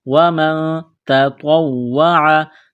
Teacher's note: یہاں نون ساکن کے بعد تا ہے، حروف اخفا ہے تو آواز ناک میں چھپائیں گے، غنہ کریں گے · تا کو باریک کرنا ہے، طوا کو موٹا کرنا ہے، واو کو دبانا ہے تشدید کی وجہ سے